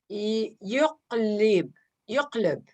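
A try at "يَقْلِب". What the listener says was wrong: Slowly. On the ya, you cut a fatha. Okay, and there is no there's e. Yaqlib. Yaqlib, which means turn around, okay?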